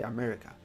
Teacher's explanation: with the stress on me, you're gonna say it a bit longer, a bit higher, a little bit stronger